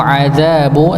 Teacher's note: dzanya dibaca dua harakat